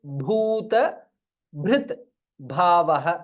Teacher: so all the places भ इज महाप्राण